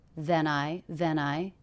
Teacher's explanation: he connected this ending consonant to the beginning vowel the diphthong I to smooth that out